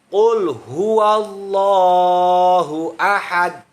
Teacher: dalnya itu huruf qalqalah kubro. Itu harus memantul bunyinya.